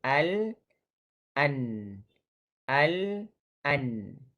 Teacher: pastikan sebutan huruf nun itu hujung lidah bertemu dengan langit atas, tetapi berbeza tempat tuju dengan huruf lam.